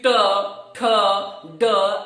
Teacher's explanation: जब ट बोलते हैं तो हमारी जीभ मुड़ती है ऐसे याद करने के लिए, तो इसे मूर्धन्य बोल दिया जाता है।